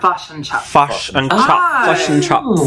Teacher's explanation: if an Australian person says fish and chips, someone from New Zealand would say fush and chops